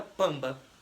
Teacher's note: Não ficou um som de uma vogal, virou um som anasalizado. Oral, o som é pela boca, anasalizado é pelo nariz, entendeu?